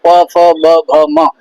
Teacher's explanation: प, फ, ब, भ, म सब ओष्ठ से उच्चारण है